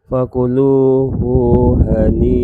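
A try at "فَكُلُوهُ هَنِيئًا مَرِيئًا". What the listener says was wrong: Hu-nya jangan panjang. Yang fakuluhu kan hu-nya tidak ada wawu di depannya. ada dua di situ. Iya, dia hani'an dan mari'an.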